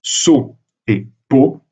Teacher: Dans les deux cas, au niveau graphique, le T est présent et donc la syllabe devrait être la rigueur entravé, mais c'est la prononciation qui compte. Et donc, dans la prononciation, le T n'est plus prononcé et la syllabe est libre. D'où le fait que le O se ferme. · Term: O fermé